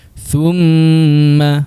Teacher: Kita dengung untuk huruf mim dengan kadar dua harakat. >> Kemudian mimnya berbaris atas.